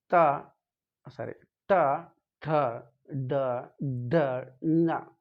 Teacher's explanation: ಮೂರ್ಧನ್ಯ ಅಂತಂದರೆ ನಾಲಿಗೆ ಸ್ವಲ್ಪ ಬೆಂಡಾಗಿ ವಾಪಸ್ ಬರುವಂಥದ್ದು ಮೂರ್ಧನ್ಯ. ಸೊ ಇಲ್ಲಿ ಅದು ಕೂಡ ಈ ತಾಲುವ್ಯದ ಮುಂಭಾಗಕ್ಕೆ ಬಡಿಯುವಂಥದ್ದು, ಸ್ವಲ್ಪ ಬೆಂಡಾಗುತ್ತೆ ನಾಲಿಗೆ ಅನ್ನೋಂಥದ್ದು ನೋಡ್ಬೋದು.